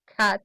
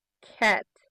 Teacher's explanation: He said cat, like a schwa, cat, instead of ash, cat.